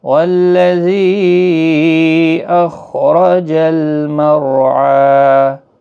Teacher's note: خا حروف مستعلیہ ہے، پر پڑھنا ہے، رو بھی زبر کی وجہ سے پر پڑھا جائے گا، رو ساکن سے پہلے زبر ہے اس لیے رو پر پڑھا جائے گا، یہاں پر بھی 1 الف کی مقدار کے برابر کھینچ کر وقف ہوگا۔